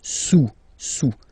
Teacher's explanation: Le cube est sous le cylindre, okay, le cube est sous le cylindre. Don't pronounce the final S, and then this OU combination of vowels is pronounced OU